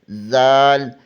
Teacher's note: دال زبان کی نوک ثنائے علیہ کی جڑ سے لگے تو دال ادا ہوتا ہے۔ زال زبان کی نوک ثنائے علیہ کے سرے سے لگے تو زال ادا ہوتا ہے